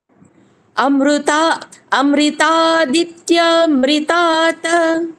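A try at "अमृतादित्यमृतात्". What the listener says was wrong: রিকার নয়, রে, হ্যাঁ, এ, একার বলতে হবে। অমৃতাদিত্যমৃতাৎ, আবার অমৃতাৎ বলছেন, অমৃতাৎ,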